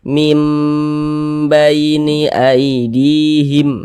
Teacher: Jadi suaranya itu kita tahan, kita panjangkan sebentar. Mim di bagian mimnya itu kita tahan, kita panjangkan sebentar. Kita dengungkan, kita kasih gunnah. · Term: ghunah